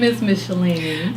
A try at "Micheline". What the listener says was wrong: I tell you, it's Miss Micheline. People think I'm saying Miss Micheline. No, Micheline into it.